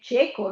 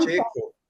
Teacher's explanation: guardate che cieco, come uno che non vede il non vedente, è con la E stretta, né? Cieco, non cieco.